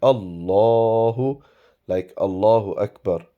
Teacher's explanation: So one thing to remember regarding the word Allah, whenever it is read in the Holy Quran or anywhere else, if there is a fatha and dhamma or zabar or pesh before the word Allah, it is pronounced with a round shaped mouth.